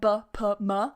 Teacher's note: If you have something that's bilabial, so with the lips, yeah, like b, p, m, we only have 3 bilabials in English. If you have any bilabials, those go together.